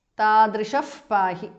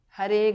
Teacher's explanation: Tadrishaha visarga changes to upadhamaniya